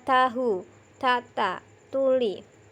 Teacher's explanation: Ujung lidah dengan pangkal dua buah gigi yang atas adalah tempat keluarnya huruf ta, dal, dan to. Bunyi huruf ta dari ujung lidah dekat pada gusi seri gigi atas